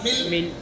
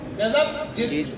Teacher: ان حروف میں مل میں قلقلہ نہیں ہے، ملی میں قلقلہ نہیں ہے، لیکن جدو میں قلقلہ ہے. کیونکہ دال قلقلہ کا حروف ہے.